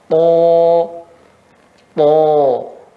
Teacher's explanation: ujung lidah mengenai gigi seri bagian atas. Itu tempat keluarnya to.